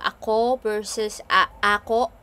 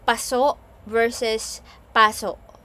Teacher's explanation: the only difference is the stress on either the first syllable or the last syllable, like the previous example that I have, ako versus ako, and then the other one, paso versus paso.